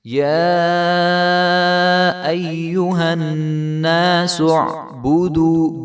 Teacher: جو دال ہے اس کے آگے واو مدہ ہے تو اس کو ہم ایک الف برابر لمبا کریں گے